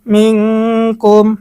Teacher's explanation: মিং এখানে আমরা গুন্না করব কারণ নুন সাকিনের পরে ইকফার হরফ কাফ এসেছে, ইকফার গুন্না।